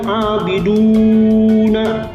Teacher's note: abiduna ini mad tabi'i, panjangnya 2 ketuk.